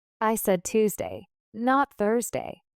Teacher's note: Tuesday gets higher intonation to show contrast with Thursday.